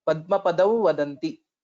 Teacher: This Anuswara will take the form of a half V with Chandra Bindu